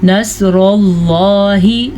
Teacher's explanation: صاد کو پر پڑھیں اور را کو بھی پر پڑھیں اور لفظ اللہ کو بھی پر پڑھیں